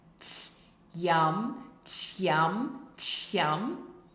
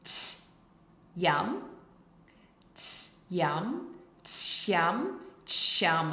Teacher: if we say them closer and closer together, and we say it faster and faster, you can kind of get this CH sound